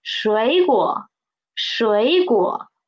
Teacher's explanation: We will change the first tone into second tone, right? The tone sandy of two third tones.